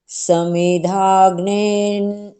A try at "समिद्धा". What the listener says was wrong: देखो समिधा नहीं ध और ध दोनों है ना समिद्धा अग्निर। हाँ द और ध।